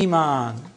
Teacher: The first Hamza has a vowel, متحرك. The second Hamza is ساكن. Then the second Hamza is changed to a long vowel.